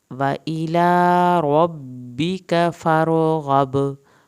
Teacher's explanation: व इला रब्बिका फारग़ब, फारो रा को हिलाना नहीं है, फारग़ब आखिर में बा का कलकला होगा